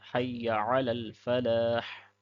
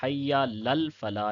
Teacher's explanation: یا کو لمبا نہیں کرنا ہے اور عین کو بھی پڑھنا ہے، حی لل فلاح نہیں کہنا ہے۔